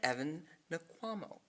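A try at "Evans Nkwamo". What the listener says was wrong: Evans Wankwa. N is silent.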